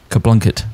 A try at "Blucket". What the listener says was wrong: It says there's no N. It says Blucket. You don't just add an N. There's no silent added N.